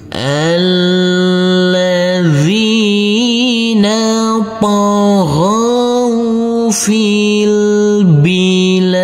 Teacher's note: Untuk huruf lam di sini boleh dibaca panjang dengan 2, 4 maupun 6 harokat.